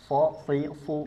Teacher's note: sh dia ke bawah tapi suaranya di sini sh kita bahas sifatnya satu persatu huruf shad dari segi nafas dia bersifat hams jelas keluar nafas